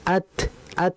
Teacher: Jadi dia langsung terputus karena ta ini sifatnya syiddah.